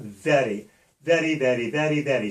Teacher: we do what's called a flipped R, or a relaxed R, or a European R, which means that we have to pull the tongue up slightly against the roof of our mouth